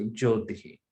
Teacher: shakara at the end of a pada becomes visarga